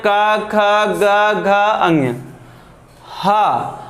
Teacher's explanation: क ख ग घ अंग अ और विसर्ग इनका उच्चारण स्थान कंठ है